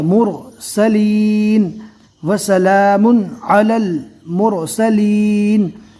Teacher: رو ساکن کو پور پڑھیں گے